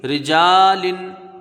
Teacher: دیکھیں یہاں پر را کے نیچے زیر ہے، را کو یہاں پر باریک پڑھیں گے، را زیری، جیم الف زبر جا، لام دو ذلن، رجالن، ٹھیک ہے، را پر زبر آیا تو را کو پر پڑھا گیا، نیچے زیر آیا تو یہ یہاں پر باریک پڑھیں گے، را کے نیچے زیر ہے اس کو جلدی پڑھیں گے اور باریک پڑھیں گے۔ جیم میں الف مدہ ہے، ایک الف کے برابر اس کو کھینچ کے پڑھیں گے، لام کے نیچے دو زیر کی تنوین ہے، رجالن، ٹھیک ہے۔